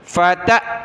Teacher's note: حمزہ ساکنہ جھٹکا دیں گے